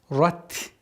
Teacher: И уходим на мягкий та с фрикативностью.